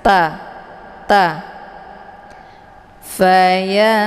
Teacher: ujung lidah ditekan ke gigi seri bagian atas ta ta fant jadi cara bacanya nunnya disamarkan kemudian siap-siap menuju ke huruf ta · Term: Ikhfa aqrab